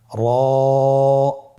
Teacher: জিহ্বার আগার উল্টা পিঠ তার বরাবর উপরে তালের সঙ্গে লাগিয়ে উচ্চারিত হয়